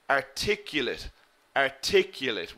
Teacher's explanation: We put the stress in the second syllable.